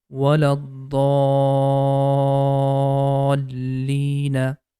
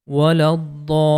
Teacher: we are going to make the da sound longer for 6 counts, and after making long sound, we are going to connect with lam. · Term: compulsory mad